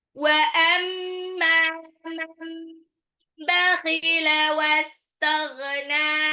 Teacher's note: Wa amma mimnya gunnah mad tabi'i · Man bakhila nun sukun ketemu ba itu iklab ya. Terus wastaghna nun di belakang dipanjangin.